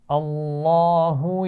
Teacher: لفظ اللہ کے لام سے پہلے زبر ہے، اس کو موٹا پڑھیں گے